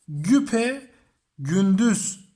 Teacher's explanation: Bakın ne olmuş oldu yine aynı şekilde. Arada bir e sesi türedi. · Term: ünlü türemesi